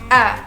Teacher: huruf vokal a dikatakan sebagai huruf vokal Tengah bentuk mulut disebut tidak bundar strukturnya terbuka karena saat kita mengucapkan tidak ada mulut bergerak dan terbuka seluruhnya